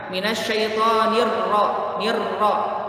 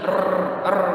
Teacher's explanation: Tidak boleh terlalu cadel, tidak boleh, nirrojim, tidak boleh. Jadi pertengahan, ada sifat takrirnya, tapi sedikit saja.